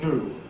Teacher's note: After / n /, however, where the standard pronunciation involves / n / plus / j /, ‘new’ [ njuː ]: London speech drops the / j / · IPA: [ nuː ]